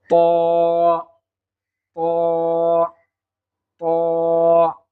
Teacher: জিহুব্বার আগাটা উপরের দাঁতের গোড়ার সঙ্গে যদি আমরা লাগিয়ে দেই তাহলে সহজে আমরা ত হরফটি পেয়ে যাব